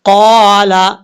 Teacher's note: قال قاف حروف مستعلیہ میں سے پر پڑھا جائے گا